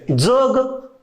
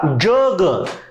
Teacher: इथला दंत तालव्य जग आणि तालव्य जग या उच्चारामुळे दोन भिन्न शब्द तयार होतात, पण तिथं चिन्ह मात्र च आणि ज एकच असलेलं दिसतं.